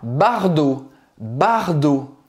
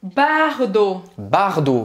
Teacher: Tem o T no final, mas não se pronuncia.